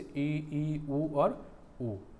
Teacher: समृद्ध मीन्स जिसको हम क्लोज में बोल सकते हैं, जिन स्वरों के उच्चारण में मुख द्वार लगभग बंद रहता है